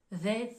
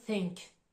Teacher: Donc là, vous pouvez distinguer le premier mot en TH, they. C'est une prononciation qui va mobiliser les cordes vocales, tandis que le mot think, c'est un TH un peu plus doux, où là, on ne va pas chercher dans la gorge à prononcer de façon plus accentuée en fait.